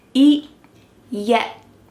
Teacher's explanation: My tongue is stopped at the top of my mouth and I'm not letting that air pass through.